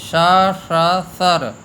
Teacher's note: इसमें पहला तालव्य सकार है और दूसरा मूर्धन्य सकार है, तीसरा दंत्य सकार है। तो इन तीनों के उच्चारण में भी ध्यान देना चाहिए कि तालव्य सकार में जिह्वा का मध्य भाग ऊपर की ओर लगता है, जैसे हम च उच्चारण करते हैं श, इससे सीटी भी बजती है। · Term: 3 प्रकार के सकार